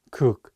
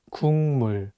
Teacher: But it's paired with the nasal sound 미음, so it changes the pronunciation from a G sound to an NG sound, and you need to read it as 국물.